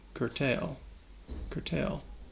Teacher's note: this word has 2 syllables, and the second syllable has that long A sound, tail, like you're talking about an animal's tail.